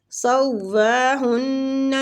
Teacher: نون مشدد ہے، ہن پہ غنہ کریں گے